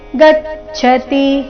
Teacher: ಗಚ್ಚತಿ ಗ ಮೇಲೆ ಆಘಾತ